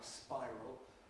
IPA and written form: ˈspaɪrəl (spiral)